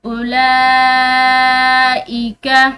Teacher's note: لام پر کھڑی زبر بھی ہے اور بڑی مد بھی ہے تو اس کو ہم کھینچ کر لمبا پڑھیں گے